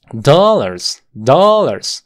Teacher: esto es una a abierta en inglés